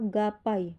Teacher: Misalnya bunyi G pada kata gapai. Bunyi ini terjadi karena bertemunya pangkal lidah dengan langit-langit lunak. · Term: dorsovelar